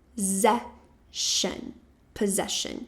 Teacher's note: esse primeiro grupinho de S que a gente tem aqui vai ter o som de Z.